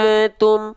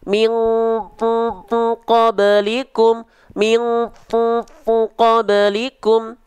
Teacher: Jadi kalau misalnya dia nun sukun atau tanwin bertemunya dengan huruf qaf kaf, baru dia dibaca dengan dengungan menyerupai eng, alias dengungan yang kuat. Ya, ceknya ketika dibuka tutup hidung suaranya hilang.